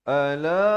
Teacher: Ala, satu la itu dipanjangkan 4 atau 5 harakat.